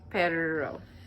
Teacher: I just hold my R sound out a little longer.